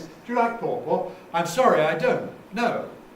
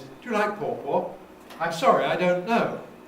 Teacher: one has a boundary, an intonation break after don't, before no. The second one doesn't.